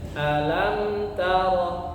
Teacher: ketika membaca kalimat lam, kata lam itu maka suaranya diangkat sedikit ya